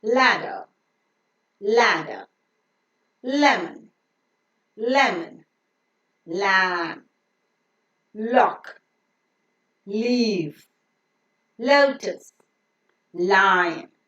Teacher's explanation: the letter L is pronounced with the tip of the tongue touching the teeth Ridge and the sides or the rims of the tongue being lowering · the air that is coming out from the lungs passes through the sides of the tongue, thereby pronouncing this lateral sound.